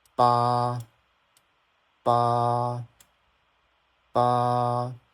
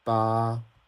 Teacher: So combined together it should it should be pronounced as ba ba ba. Very flat and very smooth. And you want to drag it a little bit to sound more natural. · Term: first tone